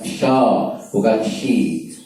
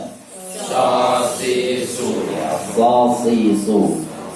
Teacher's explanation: tempatnya sama seperti sin, sama seperti sa tapi tebal sa itu saja sebenarnya, tempatnya tidak berubah. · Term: shad